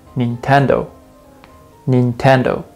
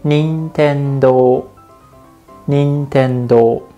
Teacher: I know it's pretty much the same, but the accent is a little bit different. In this word, Nintendo in English, the accent is on the second syllable. But in Japanese, you put a little bit of the stress on the first one and say Nintendo.